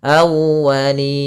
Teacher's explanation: tekan di wawnya awwa untuk menyempurnakan daripada makhraj wawnya, monyongkan sedikit